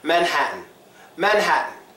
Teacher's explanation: so what happens it follows the rule the T becomes silent